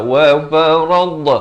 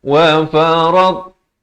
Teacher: Dot ini makhrajnya di tepi lidah, kanan ataupun kiri mengikut keselesaan, tapi jangan berikan lantunan. Dot bukan huruf khalkhalah.